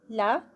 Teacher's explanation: لا 2 counts کا اور light ہوگا، اس کو ہیوی نہیں کرنا